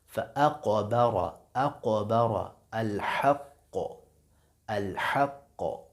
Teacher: یہ قوف ساکن ہے، یہاں قلقلہ ہوگا